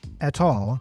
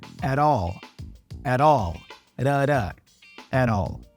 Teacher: Now, in American English, this T usually becomes a flap T. So we hear at all, at all, at all.